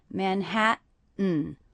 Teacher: I'm not really pronouncing these T's as true T's. That would be Manhattan, but I'm saying Manhattan with a little break. That means these T's are stop T's.